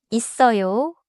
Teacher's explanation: in 있어요, 어요 begins with a vowel, so 쌍시옷 links forward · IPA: [이써요]